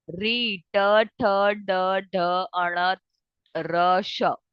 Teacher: आपकी जो tip of tongue है ना वो थोड़ी फोल्ड हो रही है और हार्ड पैलेट को टच कर रही है, राइट। तो these are related टू hard palate, but टंग का जो है वो मॉडिफिकेशन दोनों में अलग अलग है, ठीक है। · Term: मूर्धा